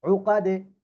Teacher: উকাদে দালে কলকলা নিচের দিকে যাবে